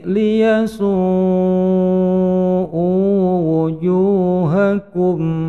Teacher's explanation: dipanjangkan lima ketukan su karena madhabi'i bertemu dengan hamzah, kemudian hamzahnya asalnya bertemu dengan wau di depannya, maka wau-nya kemudian diganti dengan harokat dhammah yang dipanjangkan dua ketukan.